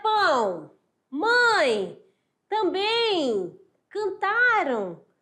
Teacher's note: A saída de ar é pela boca e pelo nariz. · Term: som nasal